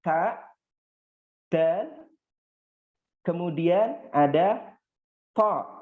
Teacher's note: kalau kalian lihat ujung lidah kalian itu menempel dengan gigi seri, pangkal gigi serinya